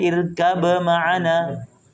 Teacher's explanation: ketemu mim yang sama-sama makhrajnya ba dari bibir mim juga dari bibir